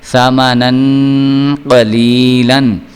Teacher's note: قوف جو ہے یہ حروف قلقلہ میں سے تو ہے، لیکن جو قوانین ہم پڑھ رہے ہیں حروف حلقی یا حروف اخفاء، ان میں سے یہ حروف اخفاء میں سے آ رہا ہے قوف، اس لیے یہاں پہ اخفاء کا قانون لاگو ہوگا، اور یہاں پہ ہم غنہ جو ہے وہ کر کے پڑھیں گے. سا زبر سا، میم زبر ما، ساما، نون دو زبر الف نن، ساما نن، قوف زبر قو، لام زیر یا لی، قلی، لام دو زبر الف لن، قلیلن، سامنن قلیلن.